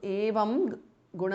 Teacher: Evam ends in Anuswara followed by Ga Guna Sampannam. So the Anuswara changes to Nga, which is the nasal or the Anunasika of the Kavarga.